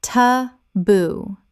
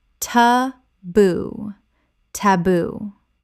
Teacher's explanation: Ta-boo. 2 syllables with the stress on the second.